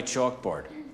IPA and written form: tʃɔ́:kbɔ́:rd (chalkboard)